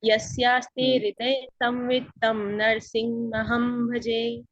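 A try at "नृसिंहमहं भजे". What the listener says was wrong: नरसिंह नहीं है, नृसिंह है, नृ है, नरसिंह नहीं है, नर नहीं है, नृसिंह। तम नृसिंह, नृसिंह, नरसिंह नहीं है। तम नृसिंह महम भजे।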